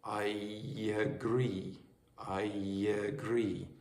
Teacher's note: you might have a Y in between certain vowel sounds